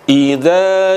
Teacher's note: itu huruf hamzah letaknya ada di pangkal tenggorokan